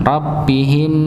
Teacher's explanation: ini mim sukun bertemu dengan mim maka didengungkan